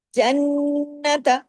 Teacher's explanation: نون پہ تشدید ہے، نون پہ بڑا غنہ کرنا ہے، آواز کو دیر تک ناک میں چھپانا ہے